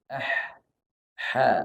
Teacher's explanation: Kita nyebut mim, tidak ada udara yang kita alirkan. Beda kalau kita nyebut ha. Kalau ha kita sebut ah, ha, ada anginnya. Tapi kalau mim, tak ada udara yang kita dorong keluar.